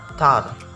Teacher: the T sound in the word tar is normally pronounced with stronger puff of air than is present in the T sound in the word star.